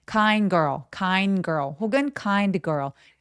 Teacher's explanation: kind드 girl걸 이렇게 으 소리가 들어가지 않도록 해 주시는 건 포인트예요